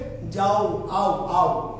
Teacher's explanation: অর্থাৎ আকার আর ও দুটো একসাথে উচ্চারিত হয়। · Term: যৌগিক স্বরধ্বনি